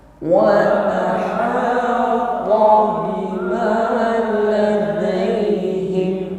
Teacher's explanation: ta di sini sifatnya istilah syiddah ya. Jadi tebal, terus tekanan pada makhrajnya juga kuat. Jadi jangan diucapkan dengan lemah atau diiringi dengan nafas.